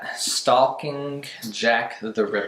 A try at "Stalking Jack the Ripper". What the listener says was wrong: Stalking. Yeah, you don't pronounce the L. You don't pronounce the L. It is. It's stalking.